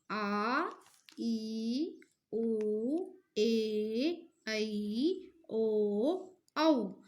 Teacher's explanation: इन स्वरों के उच्चारण में हर स्वर के उच्चारण से दुगना समय लगता है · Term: दीर्घ स्वर